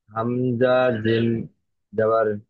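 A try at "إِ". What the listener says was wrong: যাবার নয়, জের। হামজা জিম জাবার বলছেন কেন? জের এখানে হামজার নিচে যেটা আছে এটা ধরতে হবে।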